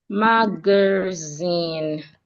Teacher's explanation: We're stressing the last part. Zen mag. So the second syllable G the vowel there reduced into a sha mag not magazine.